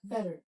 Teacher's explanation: Which means that the sound of the word T, the letter T, T is going to be converted into a soft D sound